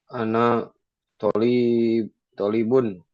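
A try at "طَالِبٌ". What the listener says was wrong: Tolibun, bukan tolibun. Panjang, toknya panjang. Tolibun. Tolibun. Talibun.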